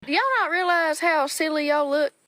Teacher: a way of speaking slowly and stretching out vowel sounds often associated with southern US English.